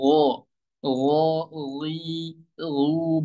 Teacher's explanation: Jadi gin ini ya tanpa ada sifat hamsnya